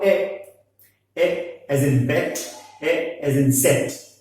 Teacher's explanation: It can be defined as a front unrounded vowel just below the half closed line.